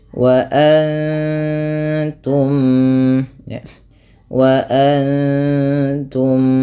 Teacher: suara mimnya ditahan dengan jelas dengan memasukkan yang pertama kepada mim kedua dan ditahan bunyinya sepanjang dua harakat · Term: Idam Mimi